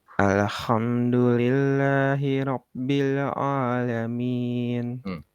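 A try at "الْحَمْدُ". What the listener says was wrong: Alhamdu coba. Nah, itu. Tadi agak nyentuh ke kho ya.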